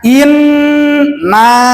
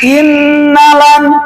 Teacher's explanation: innalan berarti mad tabi'inya tidak terbawa, harusnya inna.